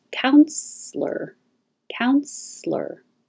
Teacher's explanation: You can say with 2 syllables, counselor, counselor, or 3 syllables, counselor, counselor. Because this E is not stressed, it's possible to just skip it.